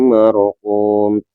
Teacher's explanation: ro sukun sebelumnya ada huruf yang berharokat fathah dinamakan tebal ro tafhim